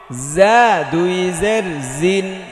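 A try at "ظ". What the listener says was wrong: একটু শক্ত করতে হবে, হ্যাঁ।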